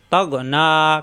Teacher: গইন কণ্ঠনালীর শেষ অংশে, তগ না খাড়া জবর জন্য একালিপ টান।